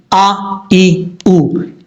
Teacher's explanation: حمزہ متحرک جو ہے وہ سختی کے ساتھ پڑھا جاتا ہے، متحرک سے مراد حمزہ کے اوپر زبر ہو، زیر ہو، پیش ہو، اس کو متحرک کہتے ہیں۔